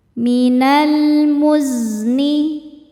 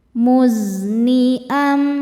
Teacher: Huruf zai ada desisan seperti suara lebah karena punya sifat namanya shofir